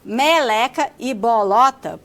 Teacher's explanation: fala meleca e bolota porque o seu dialeto apresenta uma tendência de harmonizar a altura das vogais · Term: harmonização